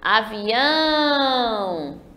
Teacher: percebam que eu demorei mais no ão. O ão aí que está destacado de vermelho é a última sílaba forte. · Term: oxítona